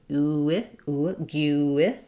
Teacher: As I move from gue to the I sound, you won't see it in the dictionary, but there's a little vowel to vowel linking there from the rounded oo to the I